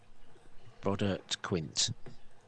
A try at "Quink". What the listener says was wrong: With a K, not with a T. Quink.